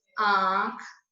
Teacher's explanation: जिस स्वर के उच्चारण में हवा नाक और मुंह से निकले, यानी दोनों जगह से इसका उच्चारण हो, नाक से भी ध्वनि सुने और मुंह से भी, उसको बोलते हैं अनुनासिक।